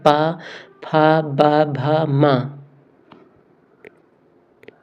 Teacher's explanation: जब भी हम प फ ब भा को बोलेंगे तो हम अपने ओठों को ध्यान से देखें तो हमारे ओठ टच होते हुए दिखाई देंगे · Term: ओष्ठ